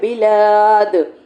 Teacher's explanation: دال کے اوپر ہم وقف کریں گے کلکلے کے ساتھ